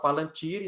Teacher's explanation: A sílaba tônica é no ti.